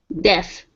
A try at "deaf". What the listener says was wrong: Because before, the was very closed. You're saying the diff. Instead of diff, it's deh, opening the mouth more. Deaf.